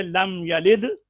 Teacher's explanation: یا کے زبر کو لمبا نہیں کرنا, ولم یولد کی واو کو کم نہیں کرنا